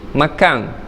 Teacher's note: Macam perkataan makan, bila mana disebutkan oleh orang Terengganu jadi makang.